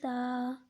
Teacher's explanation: ثا کو ایک الف کے بقدر کھینچ کر پڑھیں گے